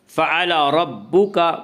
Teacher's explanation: را کے اوپر زبر سے را کو پر پڑھیں گے